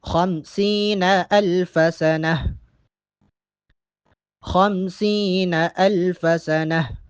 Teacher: وقف کی صورت میں سنہ میں ہا کی آواز آئے گی.